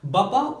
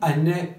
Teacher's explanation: Baba uzun ve açık bir A iken anne kısa ve kapalı A'dan oluşuyor.